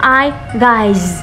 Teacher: Nhìn thấy chữ sơ nhưng mà phát âm là z